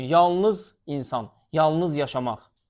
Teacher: Bir də yalnız sözünə vurğu sona düşür olur sifət.